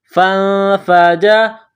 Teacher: اضْرِبْ بِعَصَاكَ الْحَجَرَ فَانفَجَرَتْ، فا کو نون کے ساتھ ملانا ہے، نون ساکن کے بعد فا ہے، حروف اخفا ہے تو یہاں آواز ناک میں چھپائیں گے، غنہ کریں گے